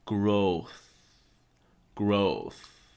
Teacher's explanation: you put the tip of your tongue on your teeth and you blow out